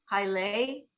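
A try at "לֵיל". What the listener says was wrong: You kind of hear the L.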